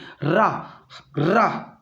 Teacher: रा हमारा लुंठित वर्ण कहलाता है, जिस उच्चारण में जीभ तालु से लुढ़क कर स्पर्श करे